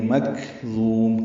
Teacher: کاف ساکن ہے، باریکی نرمی سے پڑھیں گے. ضا پر پڑھیں گے اور ضا کو لمبا کریں گے، میم ساکن پہ ہونٹ بند کر لیں گے.